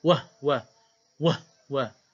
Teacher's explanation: Wahwa bagi Qalun, Abu Am dan Kisai baca dengan bisukunil ha.